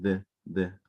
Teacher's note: toca todos los dientes, pero es la punta de la lengua y ese se le conoce como punto de articulación interdental